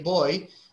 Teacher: when you say boy, you start with a o, but you end with a I. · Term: diphthongs